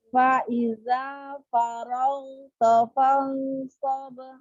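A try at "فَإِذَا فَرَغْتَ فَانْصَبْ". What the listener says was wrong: Taknya jangan tebal, tipiskan ta. Ghoinnya PR ya, kayak teman-teman yang lainnya tadi ya, Kak. Ghoinnya angkat pangkal lidahnya biar keluar sifat dulunya. Kurang terang ya, kurang.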